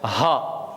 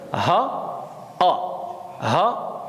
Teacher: Donc le fond de la gorge, c'est là que va sortir le ha.